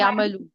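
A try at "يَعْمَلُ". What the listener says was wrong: या अमलू, यानी आइन पे जबर लगाएंगे।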